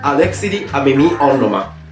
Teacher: Questa doppia N anche se ce n'è scritta una. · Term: geminazione della consonante postonica semplice